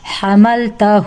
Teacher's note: تا کو تو 1 کاؤنٹ میں جلدی پڑھا، لیکن ہو یہاں پر الٹا پیش ہے، اس کو 2 کاؤنٹ پڑھنا ہے